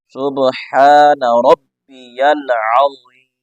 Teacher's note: ہا کو گلے سے نکالنا ہے، را کو موٹا پڑھنا ہے، با کے اوپر شد کو ظاہر کرنا ہے ، آگے عین کو بھی ظاہر گلے سے نکال کے پڑھنا